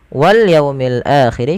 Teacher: Wal yaumil akhir, kedua-dua alif lam di sini kita baca dengan bacaan alif lam qamariyah, yaitu alif lam yang ditulis dan dibaca dengan jelas suara lamnya. Pada lafal yaumi jelaskan huruf wawunya dan didengarkan dengan bunyi u, jangan dibaca wal yaumi, yaumi dengan o, tapi wal yaumil akhir.